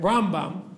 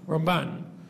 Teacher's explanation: when we say Rambam, we always put the stress on the first syllable. When we say Ramban, we always put the stress on the second syllable, right? So if you thought you heard the rabbi say Rambam, you probably heard wrong, right?